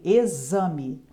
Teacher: Em exame, o X tem som de Z, exame